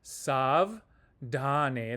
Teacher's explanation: this D is aspirated